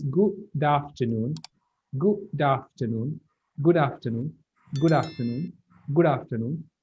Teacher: So here there is a vowel after this D. Okay, usually what happens when English people talk in a natural way of speaking, this D goes with A.